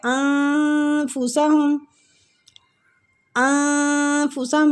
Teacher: نون ساکنہ پہ اخفا ہو رہا ہے، اس کو اخفا کریں گے، نون کی آواز کو چھپائیں گے